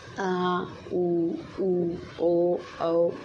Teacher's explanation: जिन स्वरों के उच्चारण में जीभ का पश्च भाग काम करता है। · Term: पश्च स्वर